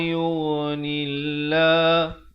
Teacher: lafz jalalah di sini dibaca dengan nipis